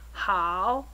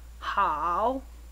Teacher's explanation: Notice how you must lower the pitch before raising it. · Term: 3rd tone